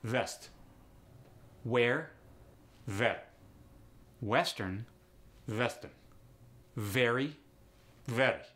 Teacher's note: when V or W come at the beginning of words, you get like a combination of both of them when you push the lips forward. For instance, west goes to vest.